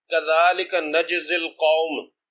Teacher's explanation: اس میں جیم کا قلقلہ ہے، یہ قلقلہ صغیرہ ہے